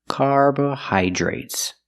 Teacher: The DR is pronounced with the j sound, plus the R together, jr. Carbohydrates.